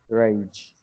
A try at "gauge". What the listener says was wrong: Gauge. Letter G, we pronounce G for garbage. Do we say it as gauge? Gauge. There's no R, it's just gauge. Gauge. No, it's letter G, not R. G.